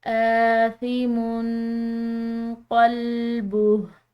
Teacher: میم کی تنوین ہے، اس کے بعد قاف، یہ حروف اخفا کے حروف میں سے ہے تو اس پر ہم نے اخفا کرنا ہے